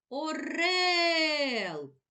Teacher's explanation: наголошений другий склад рел наголошений голосний е